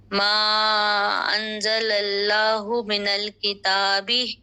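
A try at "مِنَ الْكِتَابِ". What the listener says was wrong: کتاب کا کاف موٹا کیجیے اور تا کے اوپر کھڑا زبر ہے. من الکتاب.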